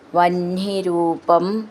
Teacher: ഹ ന എന്നാണ് എഴുതിയിരിക്കുന്നത് വെച്ചാലും ന ഹ എന്ന് വരണം അതിൻ്റെ ഉച്ചാരണം.